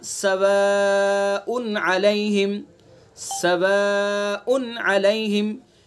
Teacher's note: तनवीन के बाद कौन सा हर्फ है? आइन है जो हरूफ हल्की में से है, तो यहाँ भी इज़हार होगा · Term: इज़हार हल्की